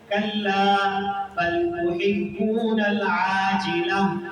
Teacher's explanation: یہ جو ہا کی آواز آئی یہ اصل میں تا تھی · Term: گول تا